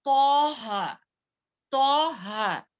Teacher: तो को मोटा पढ़े, ता नहीं पढ़े।